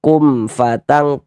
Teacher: Berarti hukumnya idhar syafawi. Baca jelas bunyi mim sukunnya, kemudian tidak didengungkan.